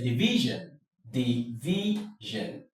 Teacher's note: Your stress falls on the syllable before the last syllable, the syllable before the shun or zhen